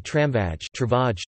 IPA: ˈtraɱvaj